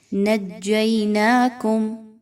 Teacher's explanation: نَجَّيْنَاكُم، جیم، نون اور جیم کو آپس میں مضبوطی کے ساتھ ملائیے۔ جیم میں سیٹی کی آواز نہیں آنی چاہیے